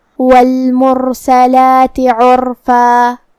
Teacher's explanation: کلمت والمرسلات میں یہاں جو کہ حرف را پہ جزم ہے تو را کا حکم ہوا تفخیم کیونکہ اس سے پہلے والے حرف پہ مطلب میم پہ پیش ہے، لہذا ہم حرف را کو بھاری آواز میں پڑھیں گے. لام کے بعد یہاں کھڑا زبر ہے تو یہاں مد طبیعی ہوا، ہم اپنی آواز 2 مد کے برابر لمبی کریں گے